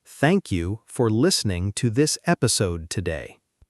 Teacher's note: Focus on the th sound in thank and notice the natural stress on listening and episode.